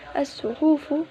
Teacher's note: mengidghamkan alif lam ke dalam huruf syamsiyah tersebut sehingga lam sukun tidak terbaca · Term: idgham syamsiyah